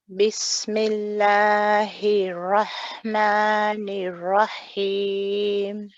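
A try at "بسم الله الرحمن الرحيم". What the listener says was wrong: When you're saying the ra, it doesn't sound like it's joined to the letter before. It sounds as though you're saying Bismillahir. You see, there's like a separation, and the ra is joined to the ha before it.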